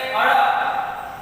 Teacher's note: અને એનાથી આગળ થડકારવાળો તો કે અળ. જીભ છે ઉપર જાય અને નીચે થડકો ખાય